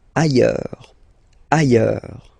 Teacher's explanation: final S not pronounced, and then you've got this y sound.